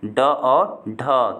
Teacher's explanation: ड और ढ को किससे उच्चारित किया जाता है? तो दोस्तों ये मूर्धन्य यानी मूर्धा से किया जाता है